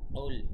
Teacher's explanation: উল, এখানে অনেক মানুষ ভুল করে উলের উচ্চারণে। উল অবশ্যই কফ গলার ভেতর থেকে বলতে হবে।